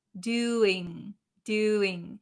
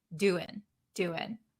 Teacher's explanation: whenever we have a word that ends in ing doing doing the in has that kind of nasally sound in but when we're talking very quickly we skip the nasal sound